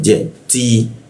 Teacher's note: huruf ti ujung lidah bertemu gigi ya ada hembusannya bocor halus